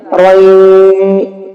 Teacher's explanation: یہاں پر نون کی آواز نہیں مل رہی بلکہ جس لفظ سے ملایا جا رہا ہے یا کی آواز نکل رہی ہے، رن نہیں بلکہ رئی۔ · رئی کہتے ہوئے غنہ کرنا ہے ناک میں